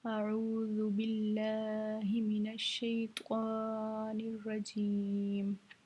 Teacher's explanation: इस ज़ाल को हमने ज़ा नहीं पढ़ना, ये ज़ाल नरम हरफों में से है तो इसको हमने नरमी के साथ अदा करना है